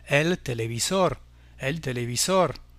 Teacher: Téléviseur, un mot très près en espagnol qui se termine par un R. Là aussi, on accentuera la dernière syllabe